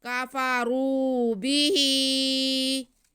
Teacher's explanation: माअरफू कफरू, माअरफू कफरू बिही, बा के नीचे ज़ेर, हा के नीचे खड़ा ज़ेर, तो बा को नहीं खींचेंगे, हा को हम खींच लेंगे।